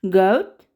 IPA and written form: ɡəʊt (goat)